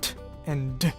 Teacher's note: Apico-alveolar stops like t and d are produced when the tip of the tongue interrupts the airflow when touching the ridge behind the top front teeth. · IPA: /t/ and /d/